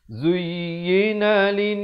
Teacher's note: Zuyyina lin, ya tekankan. Zuyyina lin dengungkan di sini wajibul gunnah.